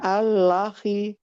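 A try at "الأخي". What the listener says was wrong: Bukan. Kan lanya sukun ini. Lanya disukunkan. Al-akhi.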